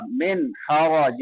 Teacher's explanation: ہا حلق سے ادا ہوگی، حلق کے درمیان سے وسط حلق سے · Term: اظہار